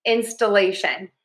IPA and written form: ˌɪnstəˈleɪʃən (instillation)